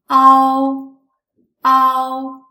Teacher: First pronounce the simple final a and then gradually switch to the sound o.